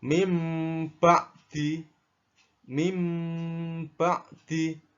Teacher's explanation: kalau ada nun mati bertemu dengan ba, langsung dibaca seperti membaca huruf mim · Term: iklab